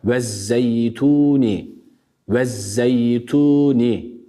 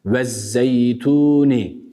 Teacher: telaffuzla biz onu artık söylemiyoruz Neden Çünkü idgam dahan dolayı buradaki Elif Lam takısı kendisinden sonraki Şemsi harflerden olan Z'ye idgam edildiği için bu şekilde okuyoruz